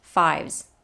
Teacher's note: here double o and do i and high and fives and this s at the end of fives is a z sound